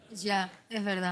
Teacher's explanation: Los argentinos suelen pronunciar bastante la sha, fricativa postvelar sorda, en las palabras que lleven tanto el fonema doble L y el fonema Y